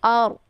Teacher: ada ro sukun sebelumnya berharakat fathah. Ini ro-nya dibaca tebal